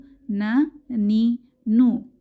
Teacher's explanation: জিহবার আগা তার বরাবর উপরের তালুর সাথে লাগিয়ে উচ্চারিত হয়